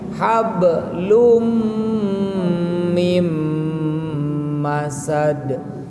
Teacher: Fi jidiha hablum, hab qalqalah, lum asalnya lun, idgham ke mim